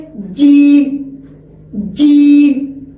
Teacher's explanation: جیسے کہ جیم جیم، اس طرح ادائیگی ہوتی تاکہ اس زبان کا بیچ اوپر کے تالو سے ملتے ہیں جب ادا ہوتے ہیں جیم۔ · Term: جیم کی مخرج